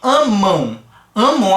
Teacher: a gente tem o fonema do a sendo a vogal né e depois tem o fonema u exercendo a função de semivogal · fazendo a função de semivogal tem um decrescimento na pronúncia tá E ele é nasal porque vai fazer como a gente explicou essa vibração Zinha no nariz